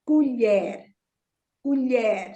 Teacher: Again, it ends with an R. So the stress is on the second syllable, the last syllable. · So you take the y sound from the throat.